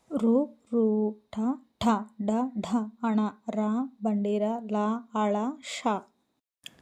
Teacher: మూర్ధము అంటే నోటి పై భాగము నుండి పుట్టిన వర్ణములను మూర్ధన్యములందురు.